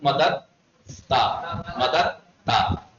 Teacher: دال کو تے میں ادغام کر لیجیے آپ